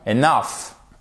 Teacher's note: Accent tonique ici sur la seconde syllabe